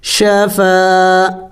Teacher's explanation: الف سے پہلے زبر ہے، ایک الف کے مقدار لمبا کرنا ہے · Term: الف مدہ